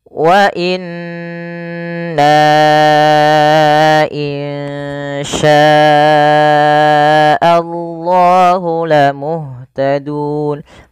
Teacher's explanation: lafal na, di sini ada bacaan kita panjangkan dengan 4 harokat atau 5 harokat, karena dia ada huruf na yang bertemu dengan huruf hamzah setelahnya dan ada tanda seperti ini. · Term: mad jaiz munfasil